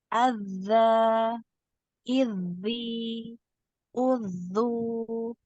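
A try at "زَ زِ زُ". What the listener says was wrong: yang ini tadi yang agak tebal di kasrah dengan dhammah ya. Azza di dibuka, mulutnya dibuka. Azza idzi uzu. Jangan sampai naik pangkal lidahnya.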